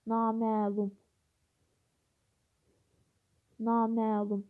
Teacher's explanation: Naməlum sözündə iki sait uzun tələffüz olunur